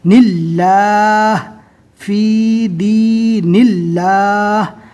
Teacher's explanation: یہاں پر اللہ کا لام باریک پڑھیں گے